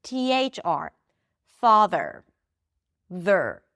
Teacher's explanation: So you bring the tongue up for the th and you pull it in for the r